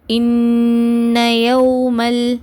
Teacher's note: அடுத்து இங்க வந்து இன்னயமல் இங்க பாத்தீங்கன்னா நூனுக்கு மேல மறுபடியும் ஷதா வந்திருக்கு அதனால என்ன பண்ணுங்க இரண்டு அளவு குண்ணா செஞ்சு ஓதுங்க · இங்கே என்ன பண்ணணும், நம்ம அந்த வாவை கவ்வி பிடிக்காமல் மென்மையாக நம்ம உச்சரிக்கணும். உதடுகளை அதிக அளவில் குவிக்கக்கூடாது. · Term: மென்மையான வாவு